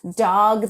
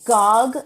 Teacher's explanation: They back sounds, like instead of dog, they say gog.